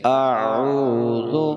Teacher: اب عین کو ایک الف کی مقدار کھینچ کے پڑھا جا رہا ہے · حمزہ اور عین دونوں کی آوازیں الگ الگ ہیں، الگ الگ مخرج ہیں، تو ان کو الگ الگ ہی جگہ سے ادا کرنا ہے۔ حمزہ حلق کا وہ حصہ جو سینے کی طرف والا ہے وہاں سے ادا ہوگا، اور عین حلق کا وہ حصہ جو درمیان میں ہے یعنی وسط حلق جس کو کہتے ہیں وہاں سے عین ادا ہوگا